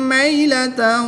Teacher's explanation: یا ساکن سے پہلے میم مشدد پر زبر ہے تو یہاں پر یالین ہوگا، اس کو لمبا نہیں کریں گے · 2 زبر کی تنوین کے بعد واو حروف یرملون میں سے ہے تو یہاں پر ادغام مع غنہ ہوگا